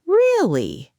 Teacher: With a rising tone sounds surprised or curious